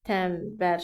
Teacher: N samitindən sonra b samiti gəldiyi üçün n m-ya keçdi.